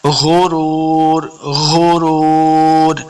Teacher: غین اور خا کا مخرج ایک جگہ سے ادا ہوتا ہے، تو غین کو بھی ہم نے موٹا کر کے پڑھنا ہے، حروف مستعلیہ سے ہے، غرور۔